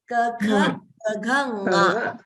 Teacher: From the throat. So nga should come from the throat.